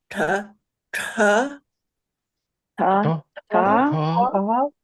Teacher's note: That's cerebral. Your tongue is straight up into your brain.